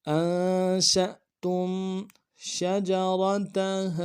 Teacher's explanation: را کو موٹا ادا کرنا ہے، تا کو نرم سے ادا کریں گے · شین کو حمزہ کے ساتھ ملائیں گے، جھٹکا دیں گے، شین کو واضح کریں گے، اور تا کو میم ساکن کے ساتھ ملانا ہے، غنہ کریں گے۔